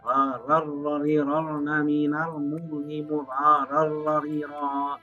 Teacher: Pada saat dibaca ran idgham bila gunnah bacanya tidak mendengung, tidak seperti idgham bi gunnah. Dua huruf lam dan ra dibacanya tidak mendengung. Apabila nun mati atau tanwin bertemu dua huruf lam dan ra, maka berlaku hukumnya hukum idgham, tapi bila gunnah, tanpa mendengung.